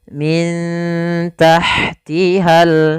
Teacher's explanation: cara membacanya disamarkan kepada huruf ta-nya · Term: bacaan Ikhfa